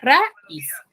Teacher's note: dos vocales juntas, pero que van a pertenecer esas dos vocales a sílabas distintas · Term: hiato